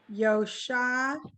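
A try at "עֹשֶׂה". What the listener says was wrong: Oh, no. Oh, seh. This is an ayin, which is silent. And the dot is the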